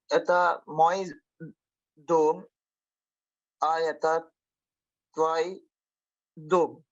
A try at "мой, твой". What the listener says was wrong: I should hear O. Say again. Мой, твой. Мой, твой. Твой.